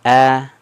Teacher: Orang Arab itu vokal a-nya itu gak gak seperti vokal di Indonesia dia rahangnya sedikit diturunkan agak tersenyum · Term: vokal ee fathah